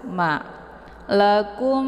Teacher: hanya ditekan kum kemudian ditahan suaranya dua harakat sambil dileburkan suara ke dalam huruf ma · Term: Idgham Mimi